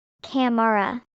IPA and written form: ˈkæmrə (camera)